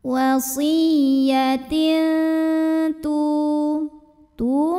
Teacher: tanwin kasrah dibunyikan samar-samar menuju ta disertai dengung. Dengung dan dengung yang kecil ya. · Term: ikhfa aqrab